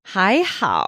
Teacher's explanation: Hi is second tone and how is third tone.